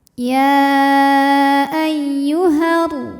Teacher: Namun panjangnya hanya saat berhenti. Kalau diteruskan atau diwasalkan, madnya gugur, haknya dipendekkan. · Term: takhalus bil hadfi